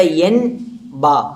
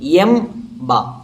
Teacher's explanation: എൻ ബ എന്ന് പറയേണ്ട സ്ഥലത്ത് എം ബ എന്ന് പറയണം